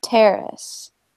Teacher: we want to put the emphasis on the first syllable